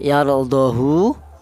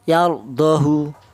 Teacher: haknya dibaca pendek sak harokat